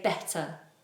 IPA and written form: betə (better)